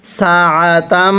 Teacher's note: এই যে মিমের উপর তাসদিদ, এজন্য আমরা মিমটিকে গুন্নাহ করে পড়ছি।